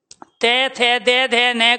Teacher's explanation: जब भी हम तय थे दे धे न का उच्चारण करेंगे तो हमारी जीभ फटाफट लगती है दांतों पे, और जब दांतों पे लगती है प्यारे बच्चों तो दांत खुलते हैं। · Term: दंतव्य